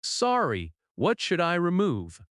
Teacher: rises at the end because it is a question. In natural American speech, "What should I" can sound like "What should I?" "What should I remove?" You do not need to say it fast. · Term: intonation